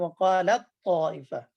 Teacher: تو اس کا تا کا تو میں ادغام وقالت طائفہ, تو یہ ادغام تام ہوا ہے کیونکہ تا ضعیف روح میں سے, تو اس کا قوی میں تو ہو سکتا ہے.